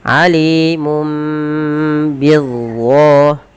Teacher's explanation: Awalnya alimun, ketemu ba digantikan dengan mim dan ditahan.